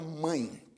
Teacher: nós temos aqui a ocorrência da vogal a né a vogal ã nasalizada e depois a semivogal a semivogal i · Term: ditongo